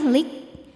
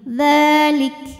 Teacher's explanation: Nah, hati-hati kafnya ini selain sifat syiddah suaranya tertahan ya, lik. Di akhir dipermudah dengan adanya sifat lain yaitu sifat hams, keluar angin. Dzalik. Jadi jangan ketinggalan anginnya ya.